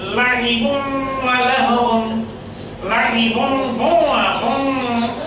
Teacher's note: যেহেতু এখানে তানবিন আছে, তানবিনের ভিতরে নুন সাকিন লুকিয়ে আছে, তাই এখানে নুনের আবহটা তৈরি হবে। লাহিবুন ওয়া লাহওয়ান, লাহিবুন ওয়া হুম, এটি নাকের মধ্যে এই চন্দ্রবিন্দুর মতো একটি নুনের আবহ তৈরি হবে। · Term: ইদগামে বাগুন্না